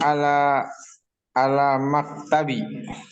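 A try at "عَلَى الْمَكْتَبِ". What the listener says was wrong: Ala maktabi apa alal maktabi? Nah, di situ ada alif lamnya, jangan terlupa.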